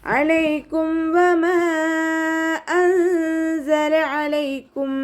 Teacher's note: അനിന്റെ സൗണ്ടിനെ തൊണ്ടയുടെ മധ്യഭാഗത്ത് തന്നെ കൊണ്ടുവരുക ഹംസയുടെ സൗണ്ട് ആയി പോകാൻ ചാൻസ് ഉണ്ട് ശ്രദ്ധിക്കുട്ടോ അലൈക്കും അലൈക്കും വ ഉച്ചരിക്കുന്ന